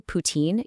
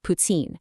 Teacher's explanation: In Quebec French, when a T is followed by an I, it creates the subtle ts sound. So, you don't say poutine, you say putsine.